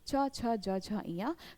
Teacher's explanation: च वर्ग व्यंजन वर्ग है इन सभी का उच्चारण स्थान क्या हो जाता है? तालव्य कहलाता है।